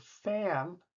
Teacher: the vowel sound moves to a more nasal because of the N being nasal at the end of the word. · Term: more nasal sound